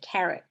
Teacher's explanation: the AR is not saying R anymore. It's saying short A, carrot, like the carrots that Bugs Bunny eats.